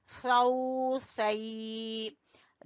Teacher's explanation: जबान की नोक जब सामने वाले 2 दांतों के सिरे से लगे तो सा अदा होता है।